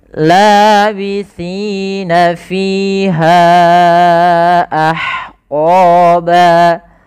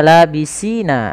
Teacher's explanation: ujung lidah kita menempel dengan gigi sari kita agar menyempurnakan daripada makhraj daripada huruf sa